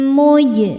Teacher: Jim hukumnya qalqalah karena jimnya sukun asli dan berada di tengah bacaan. Cara bacanya dipantulkan dengan pantulan yang kecil.